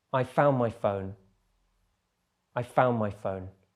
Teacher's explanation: It's difficult to pronounce the N and the D sound. So often we just drop the D and we hear found. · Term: elision